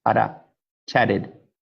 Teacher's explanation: T changes to R intervocalically in English. A type of R, like Spanish R or Japanese R, it sounds like this.